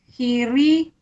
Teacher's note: Ri ni ro tu dibaca nipis. Iya, baris bawah.